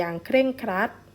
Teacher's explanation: เป็นคำควบกล้ำแท้เพราะว่าเราออกเสียงรเรือด้วยนะคะ